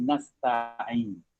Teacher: Ta ni ada angin sikit. Tapi tidaklah sampai ca. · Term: huruf ta